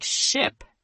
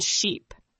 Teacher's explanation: Ship is short and quick. Sheep is long and strong.